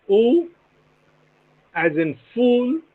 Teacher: is a back closed rounded vowel